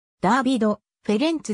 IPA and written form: ˈdɑ̈ːvidˌfɛrɛnʦ (Dávid Ferenc)